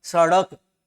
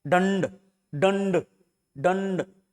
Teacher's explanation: डे पे अपने आप ही क्या उच्चारण थोड़ा सा ज्यादा हो रहा है, बालाघात ज्यादा है, बल का आघात ज्यादा है। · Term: उत्क्षिप्त व्यंजन